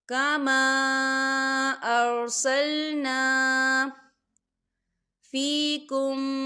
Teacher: تو ہم اسے 4 حرکت کے برابر کھینچ کے پڑھیں گے۔